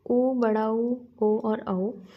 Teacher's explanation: वृत्तमुखी वे स्वर जिनके उच्चारण में होठ गोलाकार हो जाते हैं, उन्हें वृत्तमुखी स्वर कहा जाता है।